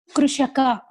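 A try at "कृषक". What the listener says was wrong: It is Krishaka. Not Krushaka, not U. There is no U. Krishaka.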